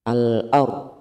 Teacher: ro sukun didahului fathah. Hukumnya tafhim atau tebal. Ro-nya ro tebal.